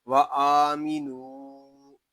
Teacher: وَآمِنُوا یہاں حمزہ کو ایک الف تک کھینچ کر پڑھیں گے. واو کو ایک الف تک کھینچ کر پڑھیں گے کیونکہ یہاں واو مدہ ہو رہا ہے. آگے جو الف ہے یہ زائد ہے، اس الف کو نہیں پڑھیں گے.